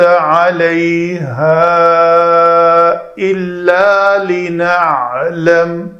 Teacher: یہاں پہ علیہا الف مدہ محل مد ہے، اور آگے حمزہ دوسرے کلمہ میں سبب مد ہے، تو یہاں پہ مد ہوگی